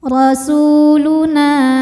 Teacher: Na dihukumi dengan mad thobi'i zohiri. Sebab ada alif yang sebelumnya fathah. Maka nun panjang dua harakat.